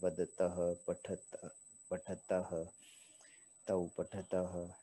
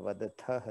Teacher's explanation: और वदथह था द्विवचन में, वैसे ही यहाँ तौ पठतः है, यहाँ पे त है अल्पप्राण और मध्यम पुरुष में वही महाप्राण था , वदथह था। तो यहाँ पे अल्प प्राण है, वदतः पठतः